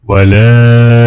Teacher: لام کو الف کے ساتھ ملاتے ہوئے ایک الف کے برابر کھینچیں گے